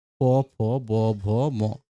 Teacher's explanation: যেগুলো ২ ঠোঁট লাগে এগুলো ওষ্ঠব্যঞ্জন। মানে ঠোঁট দুটি কাছাকাছি এসে যায় ওষ্ঠব্যঞ্জনে।